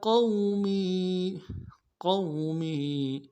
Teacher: قوم واو لین ہے، بغیر کھینچے پڑیں گے، قاف کو موٹا کریں گے، می یا مدہ ہے، ایک الف مقدار میں کھینچیں گے۔